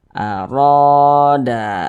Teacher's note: tepat sebelum huruf alif nah sehingganya huruf ro dibaca panjang nah ro dibaca panjang Mad Thobi'i panjangnya dua harakat